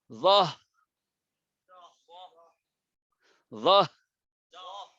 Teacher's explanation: হলকের শুরু, অর্থাৎ নিচের অংশের মধ্যে হলো হা। এখান থেকে বাতাস বের হবে।